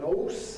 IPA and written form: ɔːs (horse)